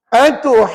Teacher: pada ha tu 6, ju 6, lepas tu dengung 2, lepas tu ni 2, total 16 harakat. 1 nafas.